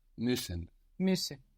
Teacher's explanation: This is written M-U and U with the umlaut, the two little dots above the U, S-S-E-N. Now this double S makes the U sound shorter